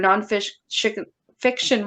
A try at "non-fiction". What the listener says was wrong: You said non-fission.